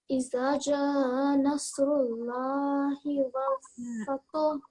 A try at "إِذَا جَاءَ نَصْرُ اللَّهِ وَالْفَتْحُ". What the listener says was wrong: Zal has alif, so Iza, and then Jim, Ja, so we have this Mad Kabir, so you're meant to prolong it for 4 to 6 seconds. So Iza, Ja, so prolong it, okay?